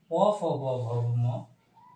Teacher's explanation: এদের উচ্চারণ ওষ্ঠ বা ওষ্ঠ উচ্চারিত হয় বলে এদের ওষ্ঠ ব্যঞ্জন বলা হয়